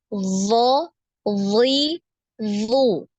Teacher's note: jadi tebal ya naik semua lidahnya naik semua kecuali Tengah lidah